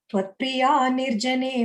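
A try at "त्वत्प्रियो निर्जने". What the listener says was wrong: Second time, you said Tvatpriya, it's Tvatpriyo Nirjanema.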